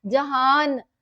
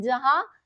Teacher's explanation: अगर हम नून की पूरी आवाज इस्तेमाल करें तो होगा जहान